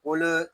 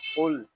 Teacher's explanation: یہاں قاف کو پر پڑھیں گے، لام ساکن ہے، اس کو سکون کے ساتھ ادا کریں گے۔ اس کو قل اس طرح نہیں پڑھیں گے، اس کو پڑھیں گے قل۔